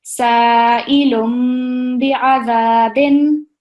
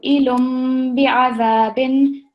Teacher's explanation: we're also going to pause a little bit as we're joining the meme sound to the ba